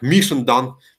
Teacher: the first vowel is light, the second vowel is light, and the third one is heavy, so stress the third one